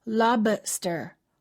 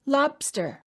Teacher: make sure that you don't release the B don't say lobster hold the B and say lobster but please